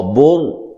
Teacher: اب یہ را ساکن ہے تو را ساکن سے پہلے پیش یا زبر، ٹھیک ہے، ہو تو اس را کو بھی موٹا کر کے پڑھا جاتا ہے